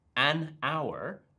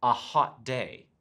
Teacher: we'll say an hour because in hour h has a vowel sound but in a hot day h is a consonant sound